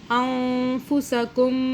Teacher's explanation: اخفاء کا قاعدہ آگے آ گیا، نون کو چھپائیں گے